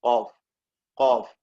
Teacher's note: ഇവിടെ ഖാഫിന്റെ മഖ്റജാണ് അഖ്സൽ ലിസാൻ. അഖ്സൽ ലിസാനിൽ നിന്നുമാണ് ഖാഫ് ഉച്ചരിക്കേണ്ടത്.